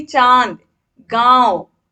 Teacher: बोले जाते हैं तो उनके ऊपर चंद्र बिंदु लगाया जाता है ऐसे स्वर नाक से बोले जाने के कारण अनुनासिक कहलाते हैं